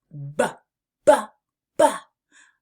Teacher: You can feel the vibration of your throat as your vocal cords work, just like in the word ball or the word B. This is also known as a bilabal plosive sound, where your lips come together and release a little burst of energy · To make the B sound, start by pressing your lips together firmly and then releasing a puff of air while turning on your voice. You can feel the vibration of your throat as your vocal cords work, just like in the word ball or the word B. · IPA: /b/